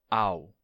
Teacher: você tem a vogal a e ela termina caindo na semivogal